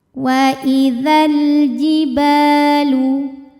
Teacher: Wa idzal, alif lamnya dinamakan dengan alif lam qamariyah karena alif lam menghadapi huruf qamariyah yaitu jim. Maka lam sukun dibaca jelas atau disebut dengan izhar qamari.